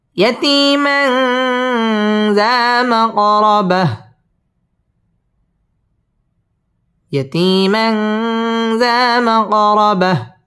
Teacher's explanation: মা কফ কলকলার হরফ ধাক্কা দিয়ে পড়তে হবে